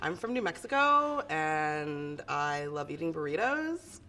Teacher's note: really wide syllables really kind of drawn out phrases it's a little sing-song